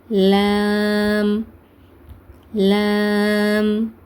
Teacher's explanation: மேல இருக்கக்கூடிய எட்டு பற்களை தொடுறதுன் மூலமாக இந்த லாம் வந்து உச்சரிக்கப்படுது. இப்போ லேம் வந்து, அந்த முதல் பகுதி ஓரம், அந்த நுனி நாவோட முதல் பகுதி ஓரம் வந்து மேல் பற்களோட எட்டு பற்களை தொடறதுனால, லேம்மோட மஹ்ரேஜ் வந்து நமக்கு கிடைக்குதுன்னு சொன்னோம்.